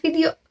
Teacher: Itu merupakan voice labiodental frikatif karena dihasilkan menggunakan getaran pita suara, bagian bibir bawah dan gigi atas, serta menghasilkan suara gesekan